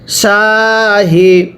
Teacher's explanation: শিনটা মোটা করে অনেকে সাহি পড়বেন, সাহি পড়লে পড়া শুদ্ধ হবে না